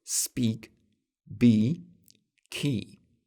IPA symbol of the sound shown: i